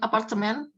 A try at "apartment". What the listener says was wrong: Coba ucapin apartment yang benar. Ya, bukan kayak kita ya, apartemen. Jadi bahasa Inggris hanya apartment.